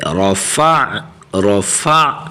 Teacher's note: حرف را کو موٹا، فا کی حرکت کو عین کے ساتھ ملائیں گے، رفع، رفع، اور عین کی آواز نکالیں گے، رفع، نون الف زبر نا، رفعنا.